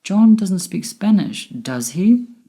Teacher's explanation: My voice went up at the end with does he? Because I'm not sure whether he speaks Spanish or not.